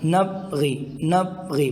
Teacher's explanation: نبغی، اگر ہم یہاں دیکھیں با حروف قلقلہ میں سے ہیں، اس میں قلقلہ کر کے پڑھیں گے نبغی، اگر قلقلہ نہیں کریں گے تو یوں ہوگا نبغی، با پا سے تبدیل ہو جائے گا